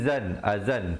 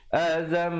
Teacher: Asalnya zal tanwin 2 di atas bunyi zan, azan, tapi bila datang mim jadi azam, 2 harakat. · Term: idgham bi gunnah